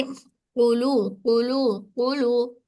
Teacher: कौफ को वाज़े तौर पर शिद्दा देना चाहिए, वरना वो आसानी से गई में बदल सकता है